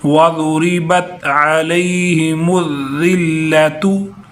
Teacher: بعض لوگ یہاں ذال کو سخت کر دیتے ہیں، حالانکہ سخت نہیں، سیٹی والا نہیں، بلکہ یہ نرم حروف میں سے ہے